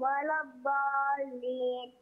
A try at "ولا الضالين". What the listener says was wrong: كمان زود شوية المد.